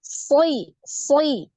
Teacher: si si ya dari pangkal lidah dan permukaan lidahnya yang naik